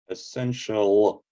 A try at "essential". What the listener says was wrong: you're saying the usual l sound uh so take the tip of your tongue and put it against your bottom teeth press it against your bottom teeth